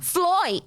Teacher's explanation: Então, o I vira oi muitas vezes. Sim, o som de I, né? No sotaque de Dublin, principalmente no sotaque, assim, mais da classe trabalhadora, seria realizado como oi